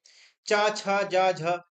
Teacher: ये तालव्य है इनको बोलते समय तालू में लगती है